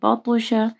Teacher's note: طوا کے اوپر کلکلا ہوگا اور طوا کو موٹا پڑھنا ہے